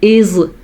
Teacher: زبان کی نوک جب ثنایا علیہ یعنی سامنے والے اوپر کے دو دانتوں سے ٹکراتی سرے سے کسی حد تک ٹچ ہوتی ہے تو زوا نکلتا ہے